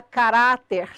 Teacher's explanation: sílaba tônica de caráter, ra